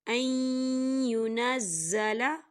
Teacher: نون ساکن کے بعد یا آ رہا ہے، اور یا جو ہے حروف یرملون میں سے ہے تو یہاں پر ادغام ہوگا، یہاں غنہ ہوگا